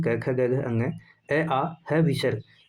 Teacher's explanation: कंठ ध्वनि में क वर्ग के सभी व्यंजन आते हैं